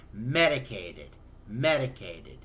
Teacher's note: You add the ud sound because it already ends in a T